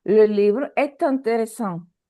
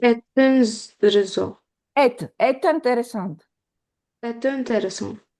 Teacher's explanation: Because we need to hear T. T, after voyelle, after vowel, we have la liaison.